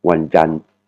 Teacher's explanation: il faut faire comme si vous allez dire Wanjan te, mais vous vous arrêtez juste avant de dire le te. Donc, ça va faire ce son Wanjan. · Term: Le T entre parenthèses